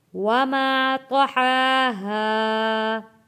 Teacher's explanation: ہا کے اوپر کھڑی زبر ہے، کھینچ کر پڑھنا ہے۔